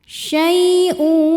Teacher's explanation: ya sukun sebelumnya fathah dibacanya lembut atau lunak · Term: huruf lin